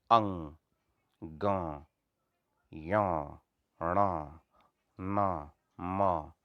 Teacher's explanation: नासिका यानी नाक से उच्चारित होने वाले, जिनमें नाक का इस्तेमाल जरूरी है